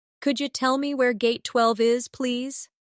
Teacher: In natural speech, could you sounds like could ya.